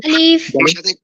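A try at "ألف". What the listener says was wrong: আলিফ। আলিফে আলিফে কিন্তু আলিফ কিন্তু ভাইয়া শোনো ভালো করে, আলিফে কোনো টান হবে না, হ্যাঁ? শুধু আলিফ। হ্যাঁ, আলিফ এটা কখনোই টান হবে না এখানে।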